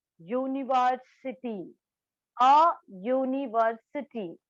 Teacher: the u at the beginning of the university sounds like u, y-o-u. It gives us the sounds of y.